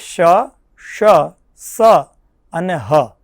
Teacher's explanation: આ વર્ણોનું ઉચ્ચારણ જ્યારે આપણે કરતા હોઈએ છીએ ત્યારે એક ઉષ્મ ઉષ્મ વાયુ આપણા મુખમાંથી નિસ્સરિત થતી હોય છે. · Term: ઉષ્મ વર્ણો